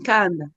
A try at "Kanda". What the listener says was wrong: Kanda. Attention, pas N. Il n'y a pas N initial. Kanda. Tu mets N alors au départ. Donc, Kanda.